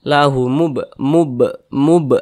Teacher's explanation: Huruf qalqalah itu ada 5, salah satunya huruf ba. Apabila dia sukun maka dipantulkan cara bacanya. Ini huruf ba, kemudian dia nih sukun, maka kita pantulkan. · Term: qalqalah sughra